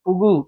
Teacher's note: ஆனாலும் தனிக்குறில அடுத்து வந்திருக்கு. தனிக்குறில அடுத்து வந்ததால ஒரு மாத்திரை அளவிலே முழுமையாக ஒலிக்கும்